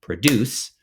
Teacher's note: My favorite example is produce, where the syllables stress is on the second syllable.